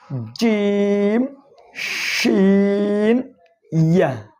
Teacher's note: 6 নম্বর মাখরাজ জিহ্বার মধ্যখান তার বরাবর উপরের তালুর সঙ্গে লাগাইয়া